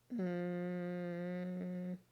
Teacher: Repeat mm. This time, you should have felt the vibration in your throat, and therefore the sound that M makes is a voiced sound